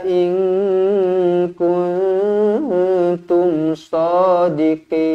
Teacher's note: Nun kosong bertemu dengan Kaf Nun kosong bertemu dengan ta kedua-duanya ikhfa Hakiki dengung dua harakat